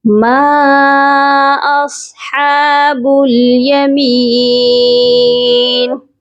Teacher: ما اصحاب الیمین، میم الف مد زبر ما، یہاں پر دیکھیں مد منفصل ہے اور اس کو بھی کم از کم 3 الف کے برابر لمبا کر کے پڑھا جائے گا